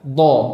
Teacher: Ketika kita mengucapkan do, ini sebenarnya kita mengucapkan huruf dal, namun huruf dal yang ditebalkan